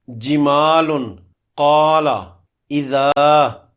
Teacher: مد کرنے کی ساری شرائط پوری ہوتی ہیں، اس لیے ہر مثال میں الف کو 2 حرکات برابر لمبا کر کے کھینچ کر پڑھیں گے۔ اس کو الف مدہ کہتے ہیں۔